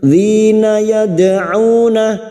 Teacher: dal sukun yang mati asli di tengah kalimat qalqalah sugra. Jangan lupa dipantulkan